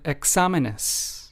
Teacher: the stress in the word examenes falls under the second syllable